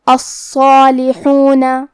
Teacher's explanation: ہم صاد اور مد الف کو دونوں کو بھاری آواز میں پڑھیں گے